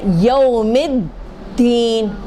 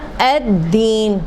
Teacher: جو یہ لام ساکن ہے وہ کیا بن گیا, وہ دال بن گیا, آنے والا حرف جیسا بن گیا, جو آ رہا نا حرف دال اس کے جیسا بن گیا.